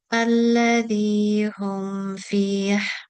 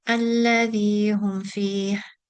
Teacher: I didn't completely close my lips when I pronounced it in the second time I read it. So I went too quickly, and it sounded as if I was concealing the meme rather than pronouncing it with har.